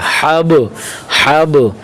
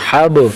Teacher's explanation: آگے حابا زبر حب، لام دو پیش لن، ہا کی حرکت کو با کے ساتھ ملائیں گے، ہا کی زبر کو با کے ساتھ اور با کو کلکلا کریں گے، با کو کلکلا کے ساتھ ادا کریں گے، تھوڑا سا ہلا کے پڑھیں گے، ٹھیک ہے۔ حب، حب، تھوڑا سا با کو آخر میں ہلانا ہے، حب، لام دو پیش لن، حب لن، حب لن، ٹھیک ہے۔